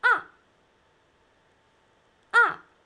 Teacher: start from high pitch then sharp falling like you're hurt